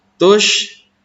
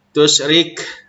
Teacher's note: Tush ini ada yang menyebutkan mahmusah ya, karena ketika mengucapkan huruf tersebut ada suara angin yang keluar yang berhembus